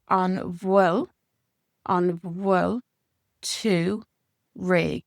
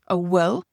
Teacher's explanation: the Munster dialect, where we pronounce the BH like a V, and we pronounce this ending here.